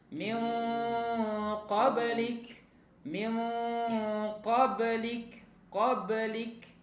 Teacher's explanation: nun sukun ketemu qaf. Ini juga ikhfa ya. Maka disamarkan, didengungkan, ditahan.